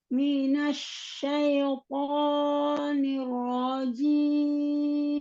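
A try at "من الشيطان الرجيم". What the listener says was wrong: Niro. Jangan niro. Kalau niro, nirnya tidak sempurna. Tadi harokat kasrohnya harus sempurna dulu. Turunkan. Bukan nirwo. Dibuka setelah begini, dia jangan monyong. Langsung dibuka.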